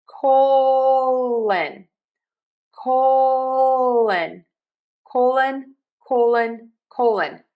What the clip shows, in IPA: ˈkoʊ.lən